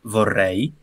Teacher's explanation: nella parola vorrei è un consona è una consonante vibrante quindi c'è una vibrazione del punto della lingua che tocca alla cresta alveolare